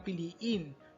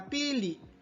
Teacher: ang salitang piliin na mula sa salitang ugat na Pili na may impit din sa dulong pantig